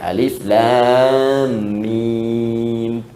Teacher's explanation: Dari hawa ke lisan ke bibir, alif, lam, mim, setelah Al-Fatihah. Alif harful hawa, lam ke lisan, mim di bibir.